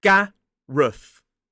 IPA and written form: ˈɡærəθ (Gareth)